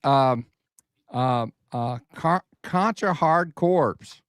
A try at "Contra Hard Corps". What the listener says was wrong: Did you say corpse? The PS is silent. It's not a corpse.